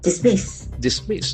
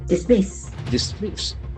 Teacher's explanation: There are two syllables. Dismiss. And accent falls on the second syllable.